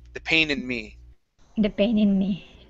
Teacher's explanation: So after the N in pain, you added a T sound. Okay, so it sounded like paint. Okay, so control your tongue on that N.